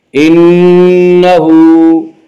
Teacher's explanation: انہو، ہا کے اوپر الٹا پیش ہے، الٹا پیش قائم مقام ہے یا مدہ کے، اس لیے الٹا پیش کو ایک الف کے برابر کھینچ کر پڑھیں گے